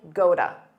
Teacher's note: because that T between two vowels becomes a soft D